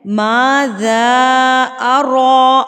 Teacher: ذال کے ساتھ جو الف ہے, الف کے اوپر مد ہے تو اس کو ہم نے 4 حرکات کے برابر کھینچنا ہے. ماذا ارا. اب یہاں پر را پر پڑھی جائے گی کیونکہ را زبر کے ساتھ ہے.